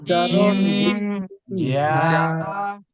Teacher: জিম বললে শক্ত হবে জিহ্বার মাঝখানে ফোর্স পরবে